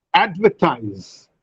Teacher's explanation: In advertise, there are three syllables, but the first syllable receives greater breath force, and therefore we say that this is a stress syllable. Ver and ties are not a stress syllable.